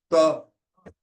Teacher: When we are saying ta, at the alveolar place, the laminal is touching the alveolar. So it will come ta.